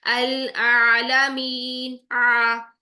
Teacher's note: ठीक है, अब कोशिश कैसे होगी कि आपने जुबान को नीचे और पीछे की तरफ प्रेस करना है, तो फिर हमारा निकलेगा आ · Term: आइन का मखरज